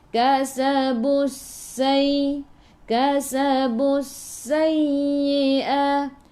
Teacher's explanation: Sifat huruf sin safir kena bunyikan berdesir